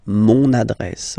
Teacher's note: you can hear now this little link so you've got to pronounce this n